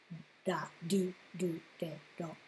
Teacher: In Japanese, you're about a third of the way between r, l, and d of English when you pronounce da, di, du, de, do. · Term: r sounds